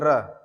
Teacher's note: र बोलते वक्त आपकी जीभ कंपन खा रही है · जैसे र अगर आप बोल रहे हैं तो आपकी जीभें दो से तीन बार लड़ रही हैं तालु से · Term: प्रकंपित व्यंजन